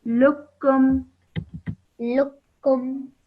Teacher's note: Okay, but then you have another kaf over here, so you straight away join the lam to the kaf.